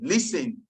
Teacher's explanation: The T in listen is silent. It's not listening, it's listen.